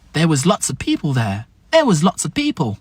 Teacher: On va avoir of qui va devenir ev.